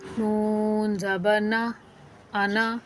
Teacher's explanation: جو نون ہے نا اس کا الف نہیں پڑھا جائے گا، خالی زبر پڑھا جائے گا، صرف زبر پڑھنا ہے. پڑا نون یعنی کہ صرف زبر پڑھا جائے گا، الف نہیں پڑھا جائے گا، نون الف نا نہیں پڑھا جائے گا.